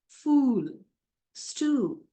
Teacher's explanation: long oo sound, back, close, rounded vowel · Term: long ooh sound